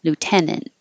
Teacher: The A and T sounds like int or unt, but you don't release the T. You just go to the N and T position and hold it there. Lieutenant.